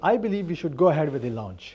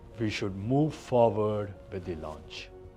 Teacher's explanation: The slight rise of the tone at the end of the sentences. It sounds like a question, even if you are making a statement. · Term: upward inflection